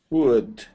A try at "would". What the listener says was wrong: Perfect. Okay, good.